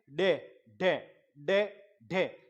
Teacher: जीभ ऊपर की तरफ टच हो रही है, तालू की तरफ। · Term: उत्क्षिप्त